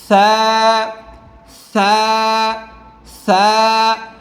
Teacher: এই সা হরফটা জিহ্বার আগা 2 দাঁতের আগার সাথে লাগায় পড়তে হবে, নরম।